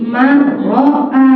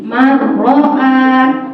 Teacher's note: Jadi kita contohkan aja, asalnya man, sebelahnya ada roh bertasdid, hilang nunnya